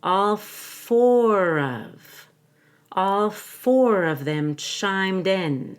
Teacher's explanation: the number four has a long o a w and an ER